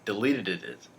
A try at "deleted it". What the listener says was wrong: Just deleted it. You got an extra syllable. It's deleted it. Deleted it. Get that paradiddle. Deleted it.